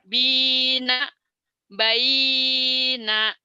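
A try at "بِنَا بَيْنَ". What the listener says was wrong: bukan, yang panjang itu yang pertama, bina itu karena matobi'i, yang kedua mah lin, baina nggak panjang.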